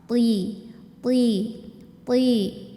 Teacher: bedanya kalau th ini enggak ada angin tapi suaranya tebal